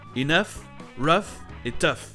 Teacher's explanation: si le GH dans OUGH se prononce, il va se prononcer F